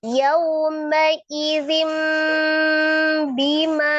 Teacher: Merubah nun sukun, bunyi nun sukun menjadi mim sukun. Yauma idzin bima menjadi yauma idzim bima ya. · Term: iklab